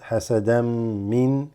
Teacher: The an from hasadan mixes and assimilates with the meme here. So it becomes hasadam.